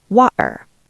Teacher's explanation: In London, especially in Cockney or Estuary accents, we use the glottal stop. We cut the air in our throat.